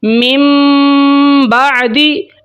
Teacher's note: تو میں یہاں پہ پڑھوں گا من بعدی، من نہیں کہنا، نون کی آواز نہیں نکالنی، نون کو ختم کر کے میم پڑھنا ہے اور غنہ کرنا ہے